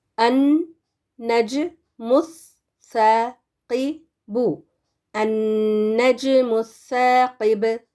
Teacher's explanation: نون زبر ان، نون جیم زبر نج، اور یہاں پر دیکھیں جیم جو ہے خطب جدن میں سے ہے نا، قلقلہ والے حروف میں سے، تو یہ کیونکہ ساکن ہے تو اس پر ہم نے قلقلہ دینا ہے